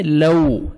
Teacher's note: Lips کو round میں لے کے جائیں گے, واو لین ہے, نرمی سے ادا کریں گے. لو, ٹھیک ہے, واو جتنا اچھا ادا ہوگا جب آپ کے لپس راؤنڈ میں صحیح جائیں گے, ہونٹ صحیح گول کریں گے تو واو اچھی طرح ادا ہوگا.